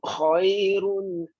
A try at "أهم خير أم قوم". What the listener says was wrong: Hati-hati, nampak macam tersaktah di sini. Ringankan sebutan ini. Ahum khairun am qaum.